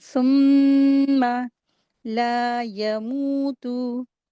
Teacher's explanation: واو مدیہ کے ساتھ آ رہا ہے 2 حرکات کھینچیں گے، لیکن تا کو جلدی پڑھیں گے